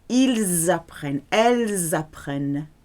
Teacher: Ils ou elles apprennent. Okay, you can join the S to the A because it's a vowel. S between 2 vowels, Z sound.